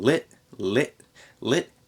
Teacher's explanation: we have a glottal stop there in lit